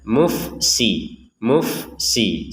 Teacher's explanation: Fa sukun Jangan dibaca dengan pantulan mufsidun jangan jangan ada e langsung saja mufsi mufsi seperti itu